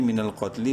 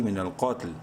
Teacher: وقف کے صورت میں کیا ہو جائے گا، لام کی زیر اڑ جائے گی